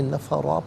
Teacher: نفرن پڑھیں گے وقف کی صورت میں، نفرا پڑھیں گے، وہاں پر دو زبر کی تنوین ہے، وقف میں الف سے چینج ہو جائے گی